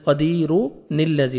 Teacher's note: تنوین کے نون کو آپ نے زیر دینا ہے اور لام کے ساتھ ملانا ہے، بیچ میں حمزہ وصلی گر جائے گا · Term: نون قطنی